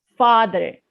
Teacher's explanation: when it comes to english they have stress in it father we have to stress in the first syllable